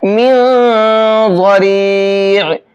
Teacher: इस नून के अंदर इख्फा करेंगे और ज़ात को मोटा करके पढ़ेंगे